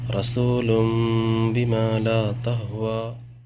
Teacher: یہاں دیکھ سکتے ہیں تنوین کے بعد با آ رہا ہے، یہاں نون ساکن کو میم میں بدل دیں گے، غنہ اخفا کے ساتھ پڑھیں گے ، اسی کو اقلاب کہتے ہیں۔ رسول بما لا تہوا۔